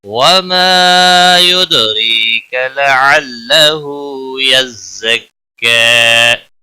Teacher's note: را زیر کی وجہ سے باریک پڑھا جائے گا